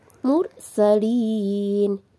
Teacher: mursalin ini ada Ro dibaca tebal karena ada Ro yang sebelumnya yaitu harakat dah mursalin Lin ini